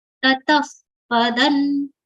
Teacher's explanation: visarga sound for which pronunciation is like blowing of air like ph